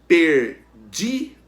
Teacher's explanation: O di, a penúltima sílaba, né, da palavra perdidos, é a sílaba tônica. Então a palavra é paroxítona.